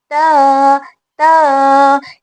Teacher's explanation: Tip of our टंग ऊपर के दांतों की जड़ को टच करेगी। ठीक है, टच करने के बाद हम वहां से हर ता की आवाज पैदा होगी, त त, ये इसका मखरज है। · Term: ता का मखरज